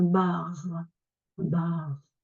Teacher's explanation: le r on l'entend à peine · on a une voyelle et ensuite un r une voyelle a on va avoir tendance à ouvrir à garder notre r en bas et ça va bien avec un a ouvert donc on va dire j'ai rendez-vous dans un bar bar onouvre